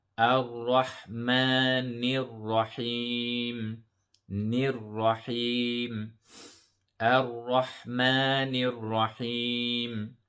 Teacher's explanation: The mim has a mad at-tabi'i, so we stretch it for 2 harakat.